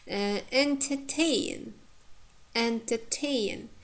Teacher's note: Here the second syllable is weak, and the last third syllable contains diphthong. Tain, it's strong.